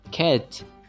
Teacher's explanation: the highest point of the tongue is at the front of the mouth and the mouth is as open as possible